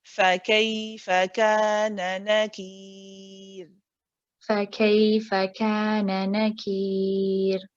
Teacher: We check the letter before, it has a kasra. Therefore, this ra is read light.